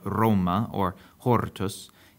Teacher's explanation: this trill, linguists call it the alveolar trill, has come down to many of the modern variants of Latin. So this R, as in Roma or hortus, is the same R that's used in Italian, Spanish, Portuguese, at least in its traditional form, and even other languages unrelated to Latin like Hungarian and Polish.